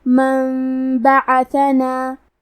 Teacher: قلب کا معنی ہے بدل دینا، تو ہم نون ساکن کو میم میں بدل کے اور غنہ کے ساتھ یہ حکم کو ادا کریں گے